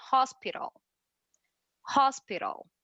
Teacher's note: E percebam que o T, ele tem um som de R, mas é um R um R bem fraquinho. Então, ao invés de falar hospital, nós falamos hospital.